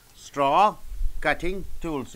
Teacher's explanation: you have to stress on the first noun, straw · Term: set phrase